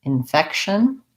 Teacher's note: So infection has second syllable stress on the fec. We have an unstressed in.